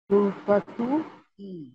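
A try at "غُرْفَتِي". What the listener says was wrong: গুরফাতু ই, কিন্তু গুরফাতু ই উচ্চারণ হয় না, হয় হচ্ছে গুরফাতি, ওই যে এটার আগের মতো, ঠিক আছে? গুরফাতি, হ্যাঁ, গুরফাতু ইটা উচ্চারণ হয় না, হয় হলো গুরফাতি।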